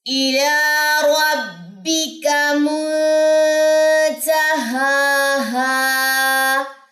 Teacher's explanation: نون ساکن کے بعد ہمارے پاس یہاں پہ تا ہے، اٹس مین یہاں پہ اخفاء حقیقی ہے، غنہ ہوگا، اخفاء ہوگا اور باریک اخفاء ہوگا کیونکہ تا باریک لیٹر ہے، ٹھیک ہے۔